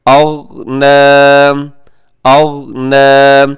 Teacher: اس لفظ کی ادائیگی میں خیال کیجیے گا کہ غین قلقلہ نہ ہو، یعنی غین کی آواز ڈبل نہ ہو۔ اغنى، اغ یہ ڈبل ہو رہی ہے، آپ نے کوشش کرنا ہے کہ یہاں پہ قلقلہ نہ ہو، یعنی آواز ڈبل نہ ہو۔